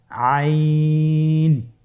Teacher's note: আইন হরফটি উচ্চারণের সময় অবশ্যই তিন আলিফ টেনে পড়তে হবে। এখন আইন হরফটি বারিক হরফ।